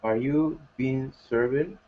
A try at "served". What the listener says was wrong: Careful pronunciation of served. Served. Served, not served. Served. One syllable.